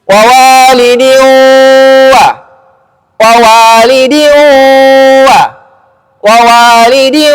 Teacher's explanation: Nah sekarang saya baca dengan dengung. Kalau hidung saya tutup bunyinya tidak elok. Artinya dengungnya ada karena mak dengung di hidung.